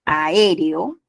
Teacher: la a y la e se separan la e y la o se separan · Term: hiato simple